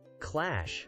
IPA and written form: klæʃ (Clash)